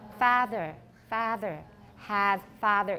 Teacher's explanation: you will hear that they do not distinguish between a and ah · Try to say both of them with the same vowel in between, because that's what Scottish people do.